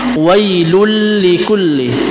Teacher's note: kita memasukkan huruf yang bertasdid, yaitu huruf lam, tanpa diikuti dengan dengung, yaitu bisa disebut dengan idgham bila gunnah, tanpa diikuti dengan dengung.